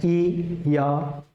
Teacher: य का जो उच्चारण स्थान है वो है तालु